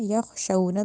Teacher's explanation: یخشون میں جو خو ہے اس کو موٹا کرنا ہے